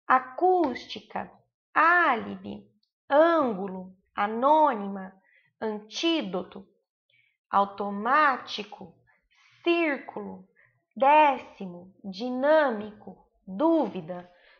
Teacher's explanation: todas essas são a antepenúltima sílaba tônica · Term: proparoxítonas